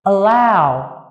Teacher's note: động từ allow có trọng âm lại vào âm tiết thứ hai